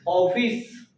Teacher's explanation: ऐसे स्वर जिनका उच्चारण आ और ओ के मध्य हो उन्हें आगत स्वर कहते हैं